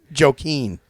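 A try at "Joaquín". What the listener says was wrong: It's a silent J.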